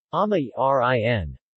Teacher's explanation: when the possessive determiner rin 'his/her' is added, the stress shifts to the second syllable of the word for 'father'